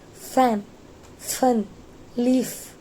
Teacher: The sound is created by the friction of air passing through the narrow gap between the bottom lip and upper teeth. For example, fan, fun, leaf.